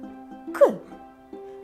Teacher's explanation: ми вимовляємо його з перешкодою нам наче Щось заважає його вимовити к і глухо вимовляємо це глухий приголосний